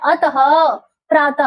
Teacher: विसर्ग का जो उच्चारण है वो ह की ध्वनि होती है। अतः यानी स्वर प्लस ह तो प्रातः त अ प्लस ह अतः विसर्ग का जो उच्चारण होगा वो ह की ध्वनि के रूप में होगा ह पे हलंत है।